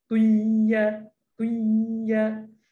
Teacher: Idgham yang kita masuk sama-sama. Ada bunyi ta, ada bunyi ya. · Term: idgham nakis